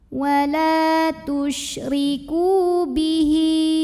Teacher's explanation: Wala tusyriku. Ku mad tabi'i dhahiri karena ada waw sukun yang didahului baris dhammah. Maka kafnya panjang 2 harokat.